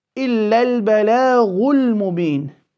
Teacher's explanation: the lam of al will be clear because it's followed by a mim, one of the letters of the moon or al-qamariyya.